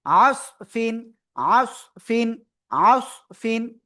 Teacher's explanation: আসফিন, আসফিন, আসফিন, গলাটা চেপে পড়তে হবে, হ্যাঁ। আর সদ অক্ষরটা একটু মোটা আওয়াজে পড়তে হয়